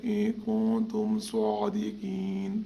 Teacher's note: دونوں نون پر اخفا ہوگا، نون کی آواز کو چھپانا ہے